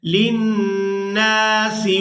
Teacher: لَتُبَيِّنُنَّهُ لِلنَّاسِ، نون پر غنہ کریں گے اور نون کو جب دوسری دفعہ اپنی حرکت یعنی زبر کے ساتھ ادا کریں گے تو اس کو ایک الف مقدار کھینچ کر ادا کریں گے